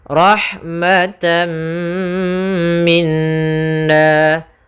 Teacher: tanwinnya atau nunnya masuk kepada huruf setelahnya maka rahmatan sambil ditahan gunahnya karena di sini bunah idgham artinya memasukkan bunah artinya yaitu disertai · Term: idgham bighhunnah